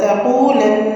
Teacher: ولا تقو، تقو قاف پیش اور واو ساکن ہے تو یہاں پہ ہم نے واو مدہ کرنی ہے 2 کاؤنٹس کے ساتھ۔ تقولن نون مشدد کا غنہ ہے، فصل اول غنہ